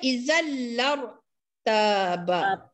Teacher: Izal tu idgham bilang unang. Tanwin bertemu dengan lam dibaca tanpa dengung.